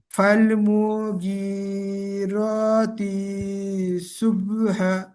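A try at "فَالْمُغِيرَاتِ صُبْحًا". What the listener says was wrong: তিটা টান হয়ে গেছে, তিটা টান হবে না, ফাল মুগীরাতি সুবহা, হাটা টান হবে শেষে একালিফ, সুবহা।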